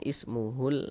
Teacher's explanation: Alif lam qamariyah itu disebut juga dengan izhar qamariyah atau izhar qamari. Karena cara membaca huruf lamnya itu dibaca jelas, dibaca izhar, yakni dibaca jelas, maksudnya itu tuh terbaca huruf lamnya gitu loh.